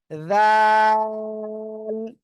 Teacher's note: ওই জিহ্বার আগা উপরে সামনের উপরে দুই দাঁতের আগার সাথে লাগান, জিহ্বার আগা সামনের উপরে দুই দাঁতের আগার সঙ্গে লাগান, জিহ্বার আগা সামনের উপরে দুই দাঁতের আগে লাগান, লাগান, লাগিয়ে নরম করে উচ্চারণ করতে হবে